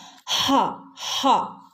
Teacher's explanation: ഈ ഹ വരുന്നത് തൊണ്ടയുടെ അങ്ങേ അറ്റം, തൊണ്ട കുഴിയിൽ നിന്നുമാണ് ഹ ഹ എന്നുള്ള ശബ്ദം വരുന്നത്.